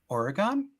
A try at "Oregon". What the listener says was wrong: usually people say Oregon, like it's not on, it's N. People always used to make fun of me because I used to say it the same way you did.